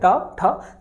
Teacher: ठीक, तो आप बोल कर देखें मूर्धा वाली जगह ट ठ, जीभ क्रीम रोल की तरह पीछे जाती है और ऊपर जाकर टकराती है